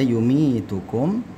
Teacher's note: ya-nya ini sukun, kemudian huruf sebelumnya ini mim ya, berharakat kasrah, maka dia dipanjangkan dua harakat